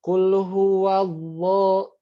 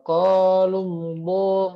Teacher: Nah, jadinya harusnya kan lam pada dasarnya gini, la gitu, la biasa ya, lali lubal, tapi lam itu berubah menjadi tebal pada lafzul jalalah dan sebelumnya didahului oleh berharokat fathah dan atau dhammah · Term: tebal lamnya